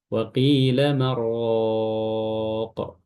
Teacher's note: mengidghamkan huruf nun kepada ra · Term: idghamun nuni